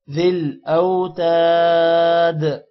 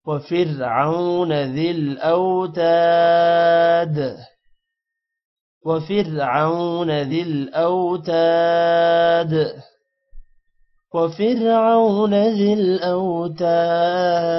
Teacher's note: حمزہ کے بعد واو ہے تھوڑا سا لمبا کریں گے اور تا کے بعد الف ہے اس کو بھی تھوڑا لمبا کریں گے اور دال پر قلقلہ ہوگا